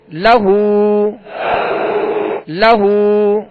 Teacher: ہا پر الٹا پیش ہے، جسے جو واو مدہ کے قائم مقام ہے، ایک الف کی مقدار میں اسے کھینچ کر ادا کریں گے